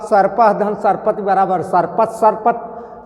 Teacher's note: विसर्ग के बाद दंतव्य स आया, सरौता वाला अर्थात बड़ा वाला स। तो इसलिए इस विसर्ग का दंतव्य स हुआ